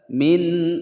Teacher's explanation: Min ada nun sukun bertemu dengan hamzah dibaca jelas, suara nun sukunnya tidak boleh dipantulkan atau didengungkan